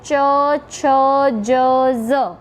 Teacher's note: જીભનો આગળનો ભાગ એ તાળવાના આગળના ભાગને સ્પર્શે છે અને એના કારણે જે વ્યંજનનું ઉચ્ચારણ થાય છે તેને તાલવ્ય વ્યંજન કહેવામાં આવે છે · જીભનો મધ્ય ભાગ એટલે કે જીભનો વચ્ચેનો ભાગ સહેજ ઊંચો થઈને તાળવાના આગળના ભાગને સ્પર્શે છે